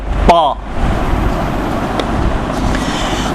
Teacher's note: ता को अदा करते वक्त आप इसको मोटा अदा करेंगे, यानी मुंह भरकर गोलाई में, और थोड़ा सा वाव की शबात आएगी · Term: ता मोटा